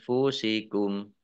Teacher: mim sukun bertemu dengan huruf wau bacaan izhar syafawi dibaca jelas